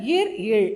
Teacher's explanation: மேல்வாயை நாக்கின் நுனி தடவுவதால் பிறக்கின்றது